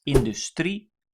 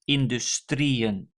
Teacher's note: the emphasis is on the final syllable of this word, industrie